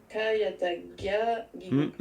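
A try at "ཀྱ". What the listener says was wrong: Kayatakia. Le K reste K. Kayatakia. Le K reste K. Le K, attention, hein, attention, il n'y a que le K qui puisse devenir ga. Le K, il reste toujours K.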